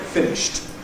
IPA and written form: ˈfɪnɪʃt (finished)